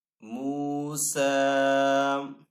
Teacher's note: تو حروف مدہ اور کھڑی حرکات قائم مقام ہے، تو دونوں کو یعنی کہ ایک الف 2 حرکات کے برابر کھینچ کر ادا کریں گے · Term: واو مدہ